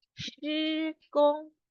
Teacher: 施工 both words are in first tone